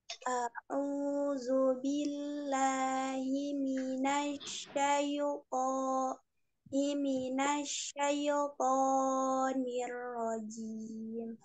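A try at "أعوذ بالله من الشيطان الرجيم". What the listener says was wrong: Ya, tonya masih monyong. Nanti belajar lagi.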